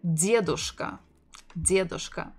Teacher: The full form would be дедушка, дедушка, stressing the first syllable